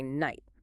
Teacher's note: nobody today pronounces the K or that harsh H in night. We just say night. · Over centuries, English speakers got efficient. The hard K at the start went silent, and the harsh, throat-clearing H dropped out entirely.